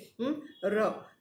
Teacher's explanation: ર ને બોલતી વખતે ર 2-3 વખત જીભ થડકારો અનુભવે છે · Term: પ્રકંપી વ્યંજનો